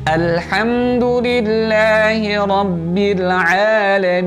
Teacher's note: ketika kita membaca alhamdulillahi rabbil alamin, mim masukkan ke hidung, kemudian ketika memanjangkan menjadikan mad, itu tidak boleh dimasukkan ke dalam hidung. Alhamdulillahi rabbil alamin, baru masuk ke hidung ya.